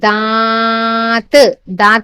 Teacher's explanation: नाक से भी आ रही है और मुंह से भी आ रही है